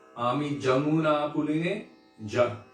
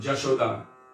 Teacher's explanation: Bengali pronunciation, they don't say ya. So it's Ami Jamuna Puline Ja.